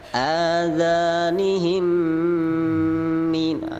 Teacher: Adzanihim min, itu mim gunnah ditekan